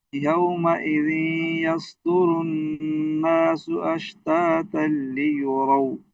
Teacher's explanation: रा पर पेश को लंबा नहीं करेंगे दाल पर पेश को लंबा नहीं करेंगे